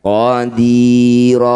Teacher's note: Bunyi fathah tanwin ganti jadi fathah panjang. Panjangnya dua harakat saja. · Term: mad iwat